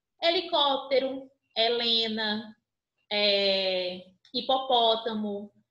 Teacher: quando eu tiver esse h inicial na sílaba ele não tem um som próprio e não tem fonema ele vai incorporar o fonema da vogal que está ao lado